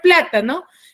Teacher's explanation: Última, la no, la ta penúltima y pla antepenúltima. ¿Cuál tiene la mayor fuerza de voz? Es la palabra, la sílaba pla. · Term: sílaba tónica